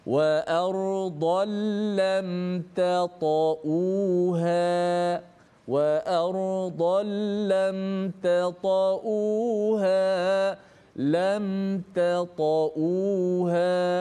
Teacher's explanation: Kita tebalkan. Lam, ta kita nipiskan, lepas tu kita naikkan suara ta tebal.